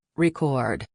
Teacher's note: When you're talking about the act of making a recording, the stress is on the second syllable, record. But if you're talking about a vinyl record, the stress is on the first syllable, record.